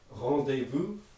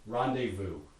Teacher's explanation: which i'm probably pronouncing a little bit exaggerated and ridiculous but that's going to have a nasal vowel in it